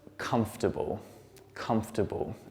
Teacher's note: we don't pronounce this second O and the R there, and it just turns into comfortable